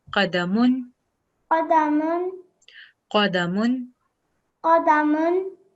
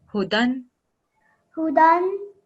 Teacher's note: you're supposed to produce a stretched nasal sound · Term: Nunnation